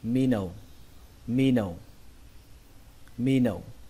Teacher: trọng âm của từ này rơi vào âm đầu tiên, đó là âm mi. Âm mi ở trong chữ là long mi. · Âm mi ở trong chữ là long mi. Âm thứ hai các bạn xuống giọng, các bạn đọc là nâu. Nó giống như là từ nâu, màu nâu trong tiếng Việt, chúng ta thêm dấu huyền cho nó thành từ nâu.